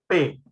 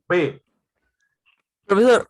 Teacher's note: una obstrucción en la salida del aire y eso hace que se contenga el aire y luego se suelta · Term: oclusivas